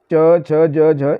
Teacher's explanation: तालव्य यानी उनके उच्चारण में तालू का प्रयोग हो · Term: तालव्य व्यंजन